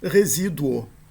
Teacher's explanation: Em português, nós temos também o exemplo desse tipo de semivogal na palavra, por exemplo, na palavra resíduo. Esse u da palavra resíduo é uma semivogal. Ele apoia, ele se apoia para ser proferido na vogal subsequente, no o.